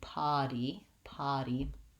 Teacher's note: I want just an open ah vowel to go right back to my D at the end. · there's no r sound and so we just have the vowel ah